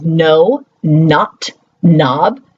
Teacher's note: When we think about words like no, not, knob, that all start with KN, there's always the consistency of getting that n sound, and no one's giving it the K.